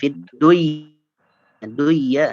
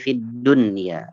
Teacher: karena nun sukun berada dalam satu kata, ya, maka syarat idghamnya tidak terpenuhi, ya, maka harus dibaca jelas. Fid dunya, tidak fid duya enggak, tapi fid dunya, ya.